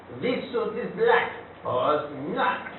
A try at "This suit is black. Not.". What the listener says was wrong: You don't say pause. This suit is black. That's a pause. Not.